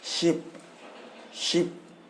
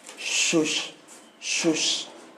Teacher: हमारा टंग ऊपर वाले पार्ट को टच करता है, तो इसलिए इसको हम लोग बोलते हैं तलब्बेशा, क्योंकि हमारे तालू में टच कर रहा है